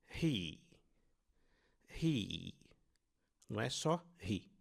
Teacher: Ah, da boca, frontal da boca, o som de i. Notem que fica bem na frente da boca onde nós produzimos esse som.